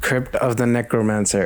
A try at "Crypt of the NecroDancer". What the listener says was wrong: No, Crypt of the Necrodancer, not Mancer. D.